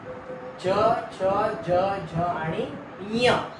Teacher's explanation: ञ जर नाकात य म्हणण्याचा प्रयत्न केला पूर्णपणे नाकात म्हणायचा आहे नाकात जर य म्हणायचा प्रयत्न केला तर आपल्याला ञ हा उच्चार बाहेर पडतो.